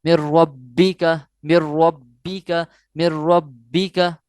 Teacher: اس کو جو ہے وہ ہم نے کرنا ہے کہ یہ مشدد ہے اور قلقلہ میں سے بھی ہے، تو اس کو زور دے کر ظاہر کر کے یا جوش سے پڑھیں گے